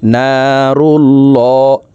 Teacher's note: আল্লাহ শব্দের আগের হরফে জবর অথবা পেশ হইলে এই লামকে ল অর্থাৎ মোটা করিয়া পড়িতে হয়